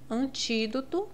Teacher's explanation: em antídoto, a mais forte é o ti, é a antepenúltima. Então, é uma proparoxítona.